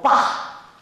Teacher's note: I'd go, bah, because I was not hearing the L's